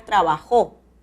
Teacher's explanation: El acento va a la última sílaba y es necesario la tilde de la aguda.